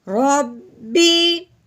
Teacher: बा के ऊपर शाद है, इसको हमने दबा के पढ़ना है और 2 दफ़ा पढ़ना है